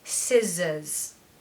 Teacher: because it falls after the vowel sound so scissors scissors so it's a z sound in the middle it's not an S · So it's a Z sound in the middle, it's not an S. So we want the true S to start and then we want a Z in the middle